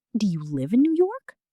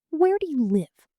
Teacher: Statements and WH questions usually fall at the end.